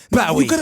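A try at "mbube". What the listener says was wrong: You gotta stretch the lips. You seem to have a better problem with your bottom lip.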